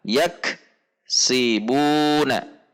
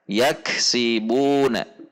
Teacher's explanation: Harusnya rapat atau tidak terjeda. Yaksi antara ak dengan si tidak terpisah.